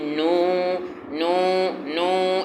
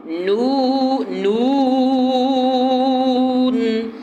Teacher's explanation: نون، اگر ہونٹ گول نہیں ہوئے تو آواز جو ہے نون میں، نون کی جو آواز ہے وہ آٹومیٹک ناک میں چلی جائے گی، نو نو نو ایسے آواز نکلے گی، ناک میں نہیں جانی چاہیے، قطعاً آواز کو ناک میں نہ لے جائیں، بلکہ ہونٹ پورے گول ہوں اور پورا زور جو ہے وہ منہ کی طرف ہو، ناک کی طرف آواز نہ جائے۔